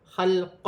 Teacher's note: اس کی ہجہ اس طریقے سے ہوگی۔ لام ساکن ہے، لام کو خا کے ساتھ ملا کر پڑھا جائے گا، خا حروف حلقی میں سے ہے